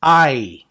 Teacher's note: So you have the A sound and the I sound blended together. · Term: diphthong